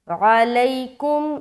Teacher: لئی میں جلدی کریں گے، نرمی کے ساتھ ادا کرنا ہے، عین نکالنا حلق سے، کاف میم پیش، کم۔